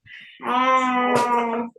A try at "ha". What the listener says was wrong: Don't stretch. Don't say Ha. Say normal. Ha, Fatha.